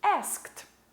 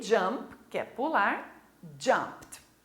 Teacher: No final da sua palavra, ele vai ter a pronúncia de T. Então, vamos acrescentar o ED aos verbos regulares, mas ele vai ter som de T.